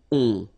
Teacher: Okay, and then this O-N, so it's a nasal and it goes in your nose and it goes like on, alright, so you don't hear any N, so it's really on